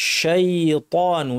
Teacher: শিন জিহ্বার মাঝখান থেকে উচ্চারণ করতে হবে যেন তাফাশি বা আওয়াজের ছড়িয়ে পড়ার কারণে, বাতাস এবং আওয়াজ মুখের ভিতরে ছড়িয়ে পড়ার কারণে যে স্ট্রং আওয়াজটা হয় সেটা যেন থাকে।